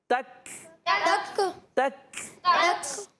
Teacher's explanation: तक तक तक तक तक देखिए आवाज बंद नहीं हो रही आवाज बंद तो होगी बंद होने के साथसाथ सांस जारी होता है